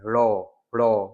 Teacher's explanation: जो प्रंक जो लुंठित है या प्रंकित है लौ ये है, ठीक है, जीभ बेलन की भांति लुढ़कती है इसमें